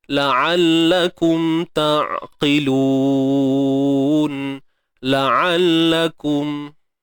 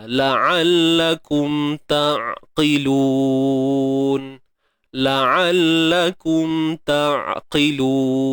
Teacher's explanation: huruf ain sempitkan tengah kerongkong itu.